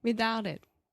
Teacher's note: I'm not saying a t there that's a stop T my tongue is in the same position but I'm not aspirating